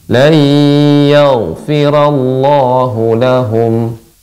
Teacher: gain tebal namun dia sifatnya juga rakhwah mengalir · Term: ghain tebal